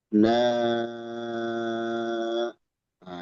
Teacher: itu mad munfasil, 4 atau 5 harokat